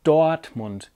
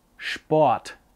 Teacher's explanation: it's very typical to hardly pronounce the R in the middle of a word at all so it's not Dortmund its Dortmund it's almost as if there